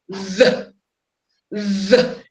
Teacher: Place your hand on your vocal cord. Let's go. V. You'll notice that there's a vibration.